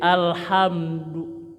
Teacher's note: suara kecikik hamdu mimnya dirapatkan ya satu huruf saja alhamdu ya du monyongkan tapi tidak panjang jangan menang monyong tapi panjang tidak ini pendek monyong tapi pendek